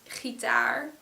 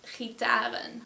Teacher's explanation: the word gitaar has a stress on the taar part, so on the last syllable